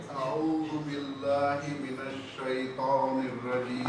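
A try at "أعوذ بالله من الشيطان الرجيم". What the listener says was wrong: عین تھوڑا اور دبائیے. عو عو.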